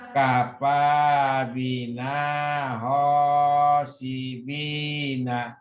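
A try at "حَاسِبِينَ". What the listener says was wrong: Ini bukan ho tapi ha.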